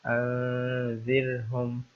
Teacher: را کے اوپر سکون ہے اور را سے پہلے زیر ہے، تو اس لیے اس را کو باریک پڑھنا ہے، ترقیق کے ساتھ پڑھنا ہے